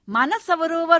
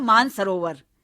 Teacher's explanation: दो एक जैसी ध्वनियां जो एक दूसरे के निकट आती हैं करीब आती हैं तो एक ध्वनि का लोप हो जाता है क्योंकि उसमें बोलने में कहीं ना कहीं असुविधा होती है इसलिए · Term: सम ध्वनियां लोप